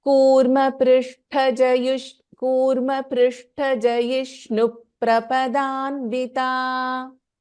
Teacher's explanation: So after this jayishnu, there is a dvitvam, okay? So there is a pa doubling.